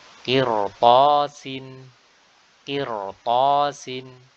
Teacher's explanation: Di sini ra dibaca tebal meskipun sebelumnya kasrah, karena huruf setelahnya adalah huruf ta yang notabene adalah huruf isti'la yang dia berharokat fathah, ya, atau tidak berharokat kasrah. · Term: huruf ra